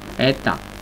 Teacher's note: ojo que abrimos la vocal, pero no bajamos el tono.